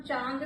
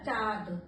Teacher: प्रयोग करके आ की आवाज निकाल रहे हैं तो आ का स्वर जो है वो मुख से नाक की ओर जा रहा है । इसलिए वो अनुनासिक कहलाएगा और लिखने में चंद्रबिंदु उसके साथ